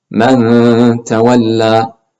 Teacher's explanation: So we prepare our mouth for this tap, which means we move our tongue forward to the tap position and then make that ghunna sound. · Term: ikhfa